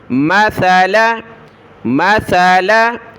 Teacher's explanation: لام کے بعد والا جو الف ہے یہ نہیں پڑھنا، یعنی کھینچنا نہیں ہے لام کو ، مثلاً نہیں پڑھنا، صرف لام زبر لا، یہ الف خالی